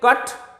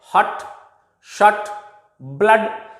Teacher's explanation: क और ट के बीच में एक छोटी सी ध्वनि आती है जिसे हम अ कहते हैं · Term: अ साउंड